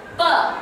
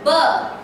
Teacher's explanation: I say labial sound, pa, which is voiceless, and ba, which is voiced. Okay, you can feel the voiceless here. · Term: voiced and voiceless consonants